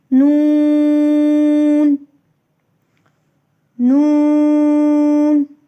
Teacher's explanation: نون کا غنہ خیشوم سے یعنی ناک کے باسے سے ادا ہوتا ہے